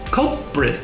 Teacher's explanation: Now, we want to remember the L. We make the sound of the L with our tongue going up. · So when we say culprit, it's not culprit, it's culprit. Gotta say the L and then switch to a P really quickly.